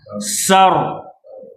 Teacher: getaran tu hanya sekadar dua kali getar